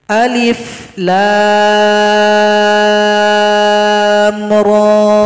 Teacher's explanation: Ra 2 ketukan karena fathah berdiri.